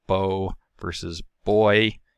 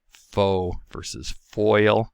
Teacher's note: our final diphthong is the oy diphthong that goes from a mid-back rounded vowel to a high front not rounded vowel